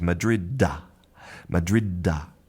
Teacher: It's almost as if we do have a vowel at the end. We have this little hidden a that we don't write.